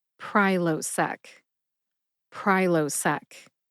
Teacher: Emphasize pry. See if you can hear that emphasis when I say it slowly.